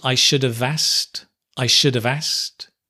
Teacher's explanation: Notice we often drop the K, right, as well, in asked